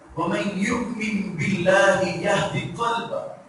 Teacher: اب قلبہ موٹے کاف کے ساتھ